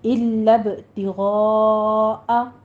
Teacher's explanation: وما تنفقون میں وہی پیچھے والی تطبیق ہے، الب نہیں ہے، الب لام کے اوپر تشدید ہے، سختی سے پڑھیے اور آگے با کے اوپر قلقلہ کرنا ہے ، الب تغاء غین کو پر پڑھتے ہوئے مد متصل واجب · غین کو پر پڑھتے ہوئے مد متصل واجب ادا کریں گے ، 5 کاؤنٹ کرنا ہے، وج نہیں کہنا، وجہ اللہ جیم